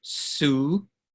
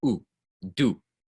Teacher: in English the do sound is a little bit longer it's made of a couple sounds really in Spanish it's just o